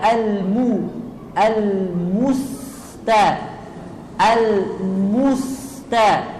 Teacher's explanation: kemudian Almu ini dibaca ee maju bibirnya